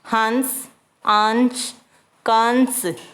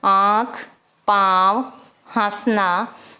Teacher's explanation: अनुस्वार और अनुनासिक के उच्चारण में भिन्नता है। अनुस्वार के उच्चारण में वायु नाक से निकलती है, जबकि अनुनासिक के उच्चारण के समय वायु नाक तथा मुंह दोनों से निकलती है